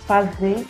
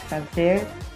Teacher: Nós encontramos a supressão do R pós-vocálico